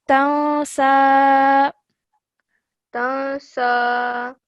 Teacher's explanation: after noon sakin, the next letter is seen. So that means a light nasal sound will be produced.